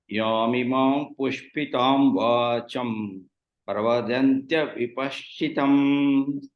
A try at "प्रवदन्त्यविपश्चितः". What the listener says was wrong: There is no dya and there is no paschitam, it is paschitaha.